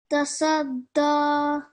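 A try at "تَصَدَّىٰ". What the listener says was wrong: Okay, the swad, can we make sure it's a bit more round and thicker? Taswadda.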